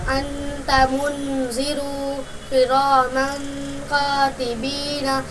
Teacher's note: تنوین نون ساکن کے بعد حروف اخفا آوے تو نون کی آواز کو ناک میں چھپا کر پڑھنا چاہیے